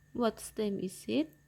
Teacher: the t in words is dropped and the vowel sound before it is closed at the glottis